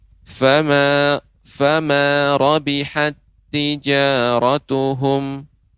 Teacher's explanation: huruf pertama dimasukkan ke dalam huruf kedua, dibaca tanpa gunnah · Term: idgham mutamathilain